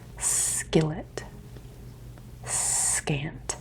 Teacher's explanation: you kind of want the K to come from the back of your mouth while the S sound is gonna be further up towards your teeth